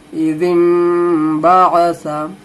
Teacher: दाल को मीम से मिला देना है, दाल को नून से नहीं मिलाना, बहुत लोग नून से मिला देते हैं, इज़िन बासा पढ़ते हैं, लेकिन ये नून जो है इसको पढ़ा जाता है छोटा मीम